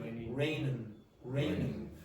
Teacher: All Irish people generally when you're using ing forms generally change it to n.